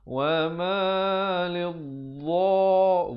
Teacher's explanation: makhrajnya macam huruf zal, tapi dia bunyi tebal lah